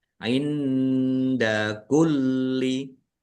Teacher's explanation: Nun sukun bertemu dengan huruf dal, bacaan ikhfa, dibaca samar-samar.